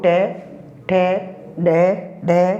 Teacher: ट वर्ग में आने वाले जो वर्ण होते हैं वो ट, ठ, ड, ढ, न तथा र और स जो है ये हमारे मूर्धा से उच्चारित होते हैं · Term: मूर्धन्य वर्ण